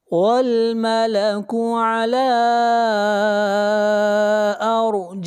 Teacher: والملك على لا کے اوپر مد منفصل ہے، اس مد کو 3 الف کے برابر کھینچ کر پڑھیں گے، اور را کو موٹا پڑھیں گے، را سے پہلے زبر ہے. جائیہا، جا مد متصل، اس مد کو 3 الف کے برابر کھینچ کر پڑھیں گے